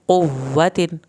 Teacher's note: قاف کو موٹا پڑھیں گے، واو کی شد پہ دیر لگائیں گے